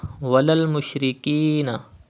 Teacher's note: there is zir before ya sakin, it is ya madda. You have to stretch up to 2 harakat.